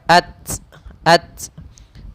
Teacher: Hamas itu mengalirnya nafas kita, ya, mengalirnya nafas. Sehingga ketika kita melafalkan ta, tapi dia ada hamas, ada aliran udaranya, ada aliran nafasnya. Tapi untuk huruf ta hanya sedikit saja, tidak terlalu berlebihan, tidak ats, tapi dia at.